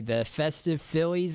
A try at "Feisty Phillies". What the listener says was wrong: Feisty? Listen, no, you said festy, and it's Feisty Phillies.